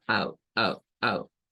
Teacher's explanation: Este sonido es un sonido que aparece en la vocal O, a veces en la vocal U, y es como mezclar la A con la U en un mismo sonido. Es como out, out, out. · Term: circunflejo